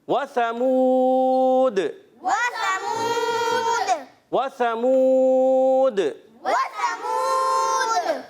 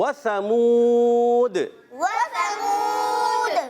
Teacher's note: سا کو ہم نے صحیح طریقے سے پڑھنا ہے بغیر سیٹی کے ، بعض لوگ اس کو سیٹی کے ساتھ پڑھتے ہیں وثمود،